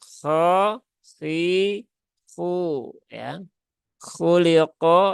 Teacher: Hurufnya huruf istilla ya maka naikkan pangkal lidahnya khoi khu ya khuliqo ya lamnya tipis qofnya juga tebal ya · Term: huruf isti'la